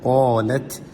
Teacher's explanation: تا پہ حروف ہمز ہے، قاف کو موٹا کریں